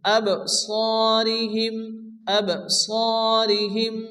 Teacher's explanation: বা সাকিন বা কলকর রকম হালকা ধাক্কা দিয়ে পড়তে হবে